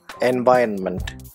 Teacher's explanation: Stress is on the second syllable, en-Viron-ment.